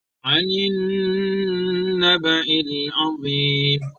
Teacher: Anin, di sini ada gunnah nun. Jadi gunnah musyaddadah. Di sini harus ditahan 2 harokat